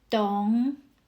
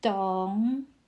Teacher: Dǒng uses the third tone. Your voice falls first, then rises.